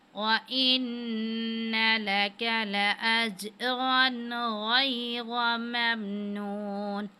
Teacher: नून मुशद्दिद है, इसको गुन्ना करने और कैफ को बारीक पढ़ना है